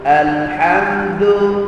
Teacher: hujung lidah membetuli akar gigi kita dia tersentuh sedikit di situ menyebabkan sebutan Dal kita jadi lembut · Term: Dal Arab